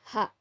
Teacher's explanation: fricative glottal yang berbunyi ha bunyi ha merupakan bunyi tak bersuara